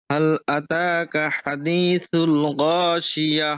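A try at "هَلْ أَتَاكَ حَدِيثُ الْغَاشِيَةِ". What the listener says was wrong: হাঁটা একটু ক্লিয়ার করে, হ্যাল, হ্যাল আতাকা। লাম যেন কলকলা না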